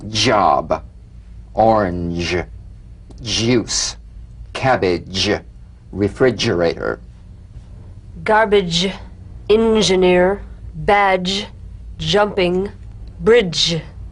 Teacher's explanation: it's a combination of the d drum beat and the zh so place the tongue on the upper gum ridge for the